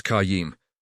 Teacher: with the kh sound again and emphasis on yim